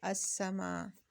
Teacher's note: بس اس کا قاعدہ ذہن میں رکھیے کہ کوئی بھی حرف حروف شمسیہ سے شروع ہوتا ہو اور اس سے پہلے الف اور لام لگ گیا ہو تو پھر ہم اس لام کو نہیں پڑھیں گے، بلکہ الف کو ڈائریکٹ حروف شمسیہ کے ساتھ ملا کر پڑھیں گے